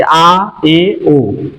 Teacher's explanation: विवृत स्वर, जैसे कि आ, ए, ओ, जिसमें हमारा जो मुंह है वो खुलता है